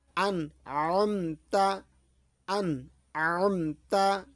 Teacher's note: আইন হলকের মাঝ হতে গোলা চেপে আদায় হয়